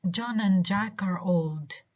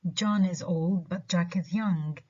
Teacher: the first sentence we stress john jack and old